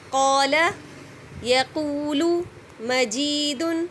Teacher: کیونکہ الف خالی یا الف ساکن ہے, اس سے پہلے زبر ہے, تو اس کو 2 کاؤنٹ تک ضرور کھینچا جائے گا. اگر ہم اس کو 2 کاؤنٹ تک نہیں کھینچیں گے تو حرف مد کا وجود قائم نہیں رہے گا. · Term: مد اصلی الطبعی